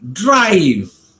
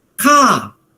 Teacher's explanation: the r is pronounced right in a word like c-a-r ca the r is silent because it comes at the end of a word